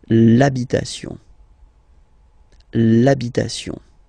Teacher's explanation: Even if you've got this h, then the first sound you hear is a.